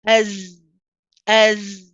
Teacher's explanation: when I say as, you can hear the sound of my voice still coming through